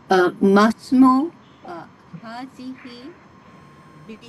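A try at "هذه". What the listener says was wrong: হাজিহি না, কিন্তু হাজিহিল। আপনি যখন যদি আলটা না বলেন তাহলে কি হয়ে যাবে? হাজি বিনতি, হাজিহিল বিনতি, মাসমু হাজিহিল বিনতি।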